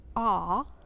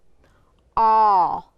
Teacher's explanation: with the aw sound the lips are pushed closer together and they tend to jut out just a little bit from the face